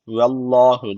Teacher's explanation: Allah lafzı burada kalın okunacak Çünkü öncesindeki harf harekesi üstte yani Allah lafzına üstten giriş yapılıyor